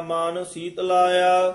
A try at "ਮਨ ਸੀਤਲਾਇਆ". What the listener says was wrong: ਮੇਰਾ ਮਨ ਸੀਤ ਲਾਇਆ, ਸੀਤ ਲਾਇਆ ਇਕੱਠਾ ਹੀ ਬੋਲ ਦੇਣਾ। ਸੀਤ ਲਾਇਆ ਵੱਖਰਾ ਨਹੀਂ ਕਹਿਣਾ ਹੈ।